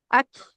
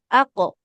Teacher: Pantulkan huruf qof-nya ya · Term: qalqalah qofnya